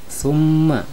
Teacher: ketika dibaca huruf mimnya harus didengungkan antara 2 sampai dengan 3 harokat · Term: wajibul gunnah